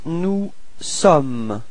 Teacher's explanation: final S is not pronounced